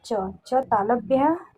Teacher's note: च तालव्य है लेकिन महाप्राण नहीं है, यह अल्प प्राण है